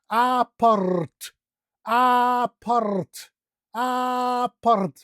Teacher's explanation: And we use the rolling R, remember?